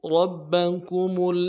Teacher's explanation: یا ایہا الناس بدو میں با کے پیش کو نرم سے ادا کرنا ہے بغیر کھینچے، اور دو میں واو مدہ ہے، ایک الف مدار میں کھینچنا ہے۔ بدو ربکم رب میں را کو موٹا کرنا ہے اور را کے زبر کو با کے ساتھ ملانا ہے، تشدید ہے، زور دینا۔ کمل، میم کو کمل میں میم کو آگے لام کے ساتھ ملانا ہے، تشدید ہے۔